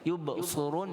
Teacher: Tapi bacaan kita yubsirun dengan huruf sad, walaupun kasrah tetap tebal, isti'la.